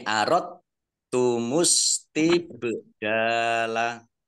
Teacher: Tidak, jadi tidak kol-kola, dal sukunnya tidak kol-kola, langsung masuk ke huruf ta. Jadi idgham. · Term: idgham mutajanisen